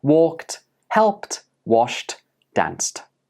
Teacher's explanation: So regular verbs that end in an unvoiced sound take the t for the past tense ed.